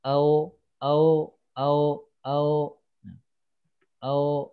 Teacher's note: ini kurang manyun ketika keluarnya O